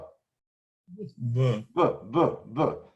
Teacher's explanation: That's called bilabial, two lips, bilabial.